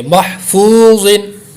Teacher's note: واو مدہ کو لمبا کریں گے ایک الف کے برابر اور حروف مستعلیہ کو موٹا پڑھیں گے